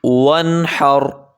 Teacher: واو پہ ہونٹ کو گول کریں گے